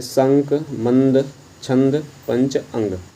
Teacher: अनुस्वार में मुंह से कम तथा नाक से अधिक सांस निकलते हैं